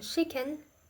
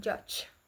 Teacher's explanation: This is a combination of stop sounds followed by a fricative sounds. The airflow is stopped and then released in a fricative manner.